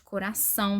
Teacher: nós temos o ditongo nasal, que o som ele é nasalizado, né? Ele é sempre fechado. O ar passa pela boca e pelo nariz ao mesmo tempo. · Ele é sempre fechado. O ar passa pela boca e pelo nariz ao mesmo tempo. Então, nós vamos sentir aqui, ó, né, o som saindo, né, pelo nariz, o arzinho, né, saindo quando a gente pronuncia.